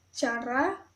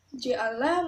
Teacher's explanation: Konsonan hambat letup mediopalatal. Konsonan ini terjadi bila artikulator pasifnya adalah langit-langit keras. Bunyi yang dihasilkan adalah C, J